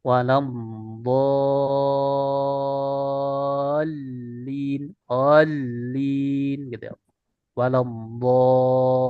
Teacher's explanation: Karena kan huruf lam itu punya sifat tawasud bainiyah. Jadi cukup setengah saja.